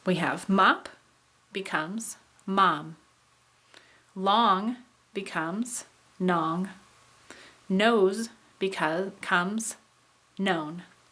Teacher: This is where a non-nasal sound changes to a nasal because of another nasal in the word. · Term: nasal assimilation